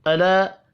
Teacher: كما آمن السفهاء ألا إنهم. ألا الف کے اوپر چھوٹی مد ہے 3 الف کے برابر کھینچ کر پڑھنا ہے